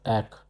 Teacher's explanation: R is pronounced as Ak from the throat